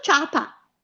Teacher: Con il dittongo vuole le due parole, le due vocali, c'è una vocale debole che è la I e la vocale forte che è la A, ciapa, le pronunciamo tutte e due insieme, nessun accento.